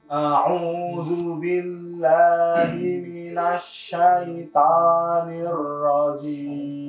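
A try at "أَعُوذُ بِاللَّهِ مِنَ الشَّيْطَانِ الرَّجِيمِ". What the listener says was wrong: Diatur suaranya, jangan lewat hidung. A'udzu billahi minasyaitonir rajim. Suaranya jelas. Jangan lewat hidung.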